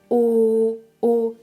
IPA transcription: o